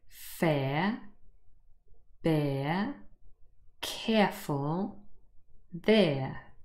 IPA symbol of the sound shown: eə